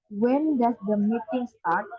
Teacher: The word start including the question mark rises up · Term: intonation